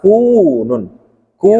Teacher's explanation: Ku-nya panjang 2 harokat.